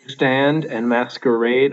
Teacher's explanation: i can't even say it without stressing that last syllable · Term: anapestic